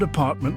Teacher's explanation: in the word apartment the first a is making the shwah sound